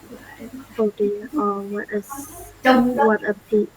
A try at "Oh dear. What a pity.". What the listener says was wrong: Yes, perfect.